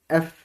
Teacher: এফ উচ্চারণ করার সময় আপনাদের দুই ঠোঁটের মাঝখান দিয়ে বাতাস বের হবে